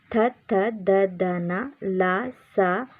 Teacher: ಇವು ಹಲ್ಲುಗಳ ಸಹಾಯದಿಂದ ಹುಟ್ಟುವುದರಿಂದ ಇವನ್ನು ದಂತ್ಯ ಅಕ್ಷರಗಳು ಗಳೆಂದು ಹೇಳುತ್ತೇವೆ